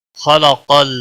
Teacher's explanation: خا کو بھی موٹا پڑھیں گے، قاف کو بھی موٹا پڑھیں گے، حروف مستعلیہ میں سے دونوں ہیں۔